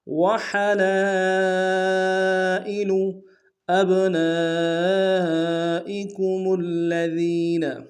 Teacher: ابنا میں حمزہ کو با کے سامنے لانا ہے، با حرف قلقلہ میں سے قلقلہ کریں گے ، نون کے ساتھ الف مدہ ہے، الف مدہ کے اوپر